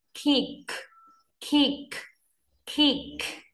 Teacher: đặc biệt là âm cuối, các bạn chú ý bật ra nhé. Kick.